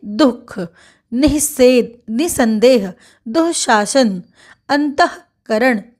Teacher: विसर्ग वाले अक्षर पर बलाघात होता है · दु के बाद विसर्ग लगा हुआ है तो दु पर विशेष बल दिया जाएगा